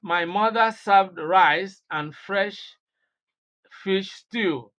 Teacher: You see, the stress is imposed on mother. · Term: contrastive or emphatic stress